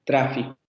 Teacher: El fonema que aparece en tra también es un vibrante simple.